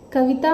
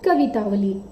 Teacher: इसी प्रकार कवितावली शब्द को देखिए, कविता धन अवली। कविता में ता में आ है और उधर ह्रस्व अ है, तो आ प्लस अ में भी संधि हो रही है तो रूप बनता है आ, दीर्घ आ होता है।